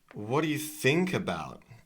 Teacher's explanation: Okay, so the strongest syllable is think.